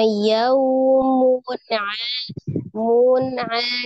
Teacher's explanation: Nun sukun atau tanwin bertemu dengan huruf ain. Ain adalah salah satu huruf al-halqi atau huruf yang keluar dari tenggorokan maka dibaca dengan izhar, jelas ya, dibaca dengan jelas.